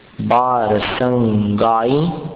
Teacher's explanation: ई पर अनुस्वार है, उसका उच्चारण अनुनासिक जैसा है।